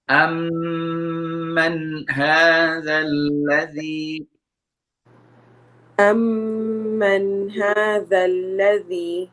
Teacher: You see here the first word amma, the meme has a shadda, so we need to make a nasal sound here.